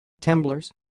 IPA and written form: temˈbloɾes (temblores)